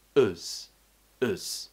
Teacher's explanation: we're finishing with a schwa sound before the z